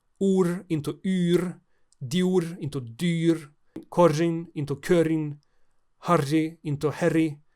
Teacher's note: Awkward clusters that were unpronounceable due to syncope dropped the inflectional r. U-umlaut is the fronting of vowels before the so-called palatal r, which gets its name from this process.